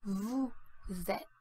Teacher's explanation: in front of a vowel sound, certain consonants which are usually silent get pronounced, which is the case with vous êtes, where the final S is pronounced as a Z sound